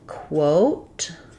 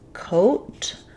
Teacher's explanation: the initial sound of quote has the w sound whereas coat just has the k sound. So they both have the oh diphthong spelled with o a here and just o here.